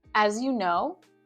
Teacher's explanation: you'll notice that my intonation goes up a little bit when there's a phrase with a comma